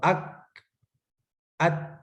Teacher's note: کاف اور تا میں سانس ہلکی سی جاری رہتی ہے، آواز رکی ہوئی ہے